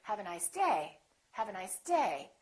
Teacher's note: so my voice is still going down even though I'm stressing the word the pitch is still down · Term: falling intonation